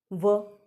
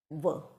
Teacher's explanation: जब आप व बोलते हैं तो हमारी ज़ुबान कहीं ना कहीं हल्की सी वहाँ स्पर्श होती है दांतों के वहाँ पर, और होंठ का प्रयोग होता है व। थोड़ा सा उच्चारण करके आप इसको देखेंगे, आपको मालूम चलेगा कि ये इस प्रकार से, तो व का उच्चारण जो होता है वो दंत्योष्ठ के रूप में आता है, इसको हम दंत्योष्ठ वर्ण कहते हैं।